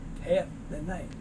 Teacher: you'll notice there's no l sound it's just as if it was spelled h a f